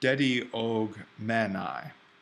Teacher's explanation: That's aspirated and that's not going to work. But because the mu is voiced, we're going to get the voiced guttural g there.